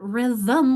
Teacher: Rhythm, I only see 1 vowel, but rhythm, we've got that we've got there a syllabic M that throws us off for spelling